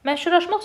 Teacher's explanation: məşhurlaşmaq sözündə ə incə, u qalın, a qalın, a qalın. Təkcə qalın olmadı, incə də oldu.